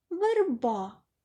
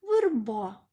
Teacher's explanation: ненаголошений звук е у вимові наближається до и